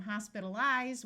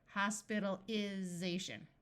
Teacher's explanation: Notice when we go from hospitalize with a long I, hospitalization with a short I.